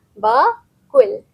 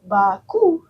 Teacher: Bunyi L di hujung disebut dengan jelas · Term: bunyi akhir